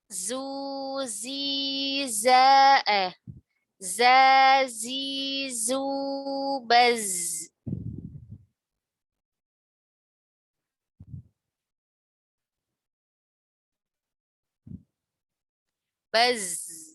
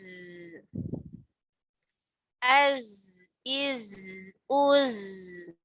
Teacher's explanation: Dia ada desis ya dan ada aliran suara meskipun tidak ada aliran nafas.